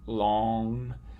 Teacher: say long or something like that without actually saying the nasal stop at the end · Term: nasalized vowel